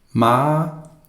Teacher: the a has a high tone